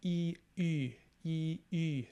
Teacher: When you see the letter Y, it's pronounced like U, which is kind of an E sound made with lip rounding